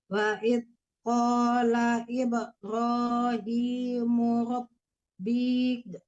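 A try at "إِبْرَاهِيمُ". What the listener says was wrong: Ibrahim panjang hi-nya. Ibrahim dipanjangkan hi-nya karena dia kasrahnya berdiri.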